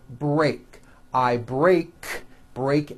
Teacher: goes for verbs like in the the verb break I break break ends with an unvoiced k sound C there's no voicing on that K so when you put